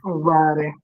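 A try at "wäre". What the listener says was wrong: Vere, not vare. Vere. When you use va, va is past tense, then vere.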